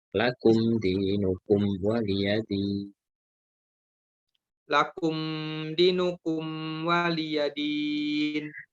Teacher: mim sukun bertemu dengan waw dibaca jelas, tidak didengungkan